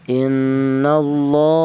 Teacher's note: lam jelal tersebut dibaca panjang dua harakat atau dua ketukan.